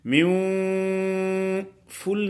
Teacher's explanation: ناک میں آواز کیوں جا رہی ہے کہ نون ساکن جو ہے اس کی غننے والی صفت کو ادا کر رہے ہیں